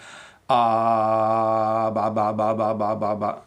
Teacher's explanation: you don't push out air when you do a B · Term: B sound